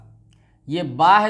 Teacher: बा का मखरज है दोनों लबों की तरी, यानी कि ये जो हमारे होंठ दिख रहे हैं आपको, दोनों होंठ ऊपर और नीचे वाले